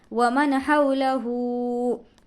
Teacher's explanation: हा हुर्फ़ हल्की में से है, इसलिए नून साकिन की आवाज़ को ज़ाहिर करके बग़ैर गुन्ने के पढ़ेंगे. इसको हम इजहार कहते हैं.